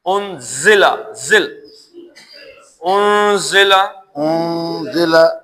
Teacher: زے کے اندر ایک ہلکی سی سیٹی ہوتی ہے جو زال سے اس کو جدا کرتی ہے. زال میں سیٹی نہیں ہوتی، لیکن زے کے اندر سیٹی ہوتی ہے.